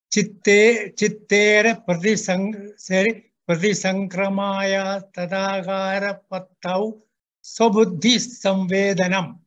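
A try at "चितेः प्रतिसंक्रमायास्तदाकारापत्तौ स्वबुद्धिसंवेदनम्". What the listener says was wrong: One thing to note here, this is chitehe. We have got used to saying chitta, chitta everywhere, but this is chiti, it becomes chitehe. No stress. Chitera pratisankramayaha. This is yaha. Tadakara patta swabuddhi samvedanam.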